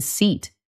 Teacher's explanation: your tongue is high in your mouth, and it is in the front. And your lips are spread wide like you are smiling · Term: long e sound